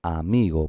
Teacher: porque está acentuada la penúltima sílaba. Sin embargo, no lleva tilde.